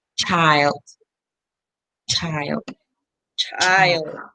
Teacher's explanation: the sound is produced with the tip of the tongue and the post-alveolar region a little behind the alveolar ridge the air is let loose producing as heising sound it produce